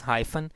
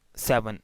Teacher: So in hyphen we can see that n is once again syllabic. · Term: syllabic n